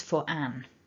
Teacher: the r is a linking r that would become activated if the next word begins with a vowel